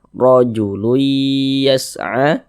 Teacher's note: huruf ra dibaca tabkhim, dibaca tebal, sehingga pangkal lisan kita naik terangkat ke atas ketika kita mengucapkannya. Ra ditebalkan.